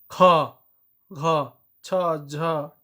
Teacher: ज्यादा हवा लगता है मुंह से निकलता है बोलने टाइम, उके महाप्राण चाहे घोष ध्वनि कहा जाता है।